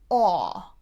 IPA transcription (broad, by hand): ɒ